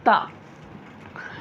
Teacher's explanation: जबान की नोक सामने के ऊपर के दांतों की जड़ में लगाने से अदा होता है सामने के ऊपर के दांतों के जड़ में लगाने से ता